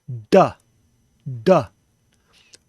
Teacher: putting our tongue to the roof of our mouth and then letting the plosive air come out, duh, duh. Or you can put a little less emphasis and say a sound like we're used to in English when we say the word them.